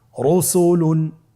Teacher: রয়ের উপরে পেশ এসেছে, তাহলে র হরফটিকে মোটা করে পড়তে হবে